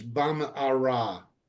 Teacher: you make just a pause to get from the mem to the ayin. So it's not Bam'ara, but Bam'ara.